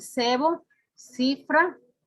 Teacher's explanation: Interdental, sordo ante las vocales E, I